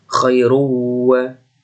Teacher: harokat dhammah tanwin dileburkan dan dibaca dengan mendengung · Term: idgham bihuna